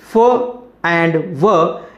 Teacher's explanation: the upper teeth touching the lower lip